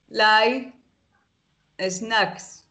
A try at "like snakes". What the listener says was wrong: Snakes. Muy bien.